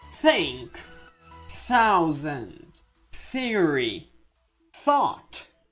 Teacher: Como se você tivesse a língua presa entre os dentes